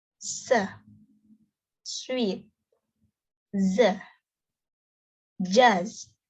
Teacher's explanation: Air is forced through tongues and alveolar ridge. It is alveolar.